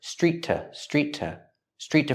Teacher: T it's not stressed link the words Street T Street T there's only one t sound when you link the words the T at the end of Street links to the next · T there's only one t sound when you link the words the T at the end of Street links to the next word